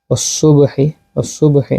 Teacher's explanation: ওয়াসসুবহি, ওয়াসসুবহি এখানে হচ্ছে কলকলা, কলকলা সুগরা, যেহেতু শব্দের মাঝখানে আসছে বা সাকিন